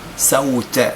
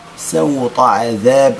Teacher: إذن السين مرققة، سوط، الطاء مفخمة لا يجب ترقيقها